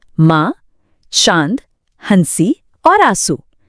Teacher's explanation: जब आप मां बोलते हैं, तो हवा आपके मुंह और नाक दोनों से एक साथ बाहर निकल रही है। यहां जो हमारा मूल स्वर था, वह पूरी तरह से नासिक्य हो गया। · उस स्वर का उच्चारण सिर्फ नाक से नहीं होता, बल्कि हवा नाक और मुंह दोनों से एक साथ बाहर आती है।